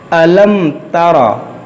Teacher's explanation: मीम साकिन के बाद एक ता है , इसलिए यहाँ इज़हार-ए-शफ़वी होगा। इसका अर्थ है कि यहाँ कोई गुन्नाह नहीं होगा , क्योंकि मीम साकिन के बाद न तो मीम है और न ही बा, इसलिए यह इज़हार-ए-शफ़वी है।